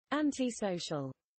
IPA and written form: ˌæntɪˈsəʊʃəl (anti-social)